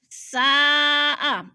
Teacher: ساء، ادھر مد متصل ہے، حروف مدہ کے بعد حمزہ اسی کلمے میں ہے تو مد متصل 4 الفی مد ہے، ہم نے اس کو 4 حرکات کے برابر لمبا کر کے پڑھنا ہے